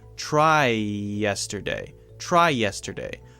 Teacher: we are sharing the vowel sound and that allows us to link words together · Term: linking words